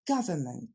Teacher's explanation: l'accent tombe sur la première syllabe · il faudra s'abstenir de ce son OU. Et il faudra aussi retenir qu'en anglais, il y a seulement 3 syllabes, pas 4 comme ont tendance à le dire les Français.